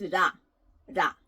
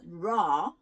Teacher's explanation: this is neither R nor L it's more like the in between sound so this if I want to say this it's ra ra